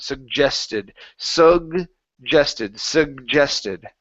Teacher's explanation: this is going to be hard G. Now we're going to say the J sound.